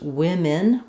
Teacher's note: it doesn't have an O sound. It's pronounced women with 2 I sounds.